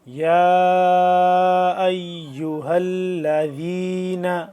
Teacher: یا کھڑا مد زبر یا، تین الف کے برابر اس کو لمبا کریں گے مد کو